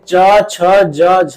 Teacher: च छ ज झ ये जो है इनको हम बोलते हैं स्पर्श संघर्षी व्यंजन